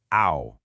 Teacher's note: For this one we're going to glide from the rounded o to the tightly rounded uh. · The glide is aw, oo. At speed, ow. This is very much like the vowel sound in the English word so.